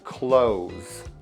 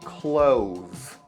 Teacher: the S is actually pronounced like a Z